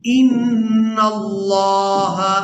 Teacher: नून को लफ्ज़ अल्लाह के लाम के साथ मिलाएंगे तो लफ्ज़ अल्लाह के लाम को पूरा अदा करेंगे क्योंकि इससे पहले वाले हरफ पर ज़बर है।